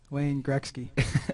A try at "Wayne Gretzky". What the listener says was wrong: Okay, the K doesn't come before the T in Wayne Gretzky.